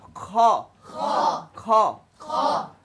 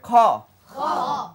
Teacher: খ মোটা হরফ খ খ বাতাস বের হবে